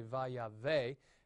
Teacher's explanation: And that's why the accent does not retract here. And so you say vayave, accent on the last syllable.